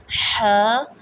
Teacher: جیم، زبان کا درمیان جب بالمقابل اوپر کے تالو سے لگے اس سے جیم ادا ہوتا ہے۔ ح، حلق کا وہ حصہ جو درمیان میں سے ہے اس سے ح ادا ہوتا ہے